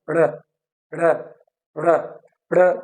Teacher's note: tip of the tongue क्या होगी, वो कर्ल्ड होती है और वो एल्वुलर रिज को टच करके फिर वापस आ जाती है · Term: रेट्रोफ्लेक्स